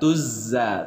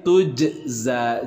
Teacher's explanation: Jadi tujza, bukan tuzza, tapi tujza. Jimnya disukunkan, dibacanya menjadi qalqalah, ada pantulan.